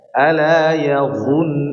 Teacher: Kalau huruf dha di sini ya dhunnu ditebalkan, suaranya dinaikkan ke atas langit.